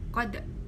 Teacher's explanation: Kemudian ada qad. Qad di sini dibaca qalqalah sughra karena terdapat huruf dal yang mati asli atau disukun asli.